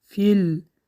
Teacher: فیل همزه وصل کلمه ها رو پیوست کرد. به این سبب فی نکشیدیم بلکه فیل پیوست کردیم